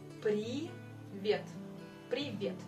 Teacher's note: On met l'accent sur la dernière syllabe.